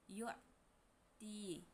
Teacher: Hukum tajwid mad thobi'i. Karena ta fathah bertemu ya sukun. Cara bacanya dipanjangkan dua harakat.